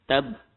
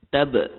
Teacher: Kalau kita tak sebut qalqalah, maka jelas. Huruf itu disekat bunyinya. Tab. Tapi sebab dia ada qalqalah, maka kita akan baca dengan tab.